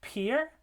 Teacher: We have the p in peer, that's the voiceless stop.